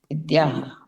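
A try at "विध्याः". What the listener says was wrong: हाँ द्या नहीं ध। यहाँ पर क्या करना है कि ध करना है, यानी विद्याः क्या हो जाएगा?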